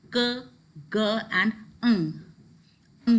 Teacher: Then you have velar region, that is the back of the tongue touches the soft palate